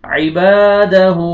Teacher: الف مدہ آ رہا ہے، الف سے پہلے فتحہ آ رہا ہے، با کو آپ نے کھینچنا ہے، اور یہ ہا ضمہ واو صغیرہ یہ آپ نے کھینچنا ہے، واو مدہ کے قائم مقام ہے۔